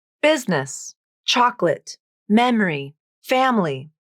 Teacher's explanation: somewhere in each of these words a vowel is dropped from the pronunciation an entire syllable just vanishes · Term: vowel syncope